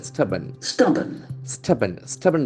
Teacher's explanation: There are only two syllables, stubborn. And the accent falls on the first syllable